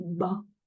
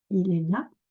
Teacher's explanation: le A ouvert, à ne pas confondre avec il est là, il est ici, qui est un A fermé. Il est là, fermé, il est là.